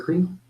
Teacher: el labio toca los dientes, labio dental F